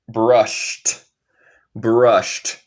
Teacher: el ed en el tiempo pasado va a sonar como un d o un t. Esto suena como t.